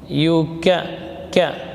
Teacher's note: pangkal lidah menempel pada langit-langit yang lunak dan yang keras bersamaan